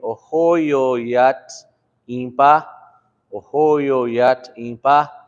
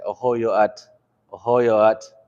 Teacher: Ohoyo ends in a vowel, and so we need another consonant to support that, which is the Y.